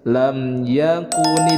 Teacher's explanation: mim sukun bertemu dengan huruf ya hukum bacaannya adalah izhar syafawi dibacanya jelas